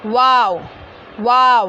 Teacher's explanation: दोनों होठों को गोल करने से अदा होता है